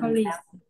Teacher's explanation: kết thúc bằng âm g, g là âm rung, bởi vì âm s bị biến thành âm giờ